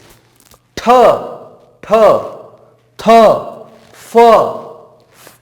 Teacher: इसका अर्थ हवा या ध्वनि जो है वह तेजी से बाहर निकल रही है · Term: महाप्राण व्यंजन